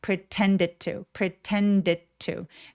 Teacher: pretend는 힘을 빼주셔야 돼요. 강세가 오지 않으니까.